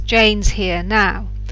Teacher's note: in the first sentence we'd usually stress all 3 words, Jane's here now. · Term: sentence stress